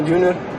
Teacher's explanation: É curioso como que na palavra júnior ele usa o fonema que a gente chama de tap, por influência do português. Os R's no inglês eles são sempre caipira, junior, mas ele acabou falando um tap, porque é uma dificuldade nossa.